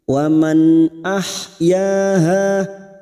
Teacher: nun sukun bertemu hamzah idhar halqi dibaca jelas tanpa mendengung. Wa man ahyaha huruf ha kita lembutkan huruf ha yaha 2 harokat masing-masing matabi'i fathah diikuti alif.